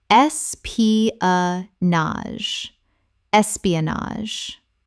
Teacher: 4 syllables with the final GE making a Z sound.